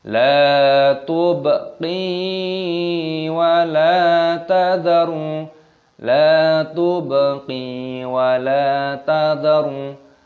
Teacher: Baknya berharokat sukun, maka dimatikan, dibaca la tub.